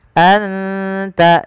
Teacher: Anta ada bacaan ikhfa hakiki, yaitu suara nunnya disamarkan ke huruf ta. Anta, anta, tidak dibaca anta, anta, tapi anta, terdengar samar-samar suara nun kepada huruf ta.